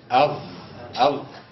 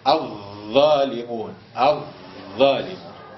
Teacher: طرف اللسان مع اطراف الثنايا [موسيقى] العليا تخرج الظاء مش الضاد تخرج الظاء والذال والثاء من طرف اللسان مع اطراف الثنايا العليا